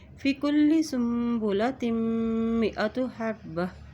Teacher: تا کے دو زر کو میم کے ساتھ ملاتے ہوئے پڑھیں گے. میم کے اوپر شد ہے.